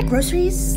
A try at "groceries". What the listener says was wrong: Wait, groceries? I thought you said groweries. You need to work on pronouncing those soft C's.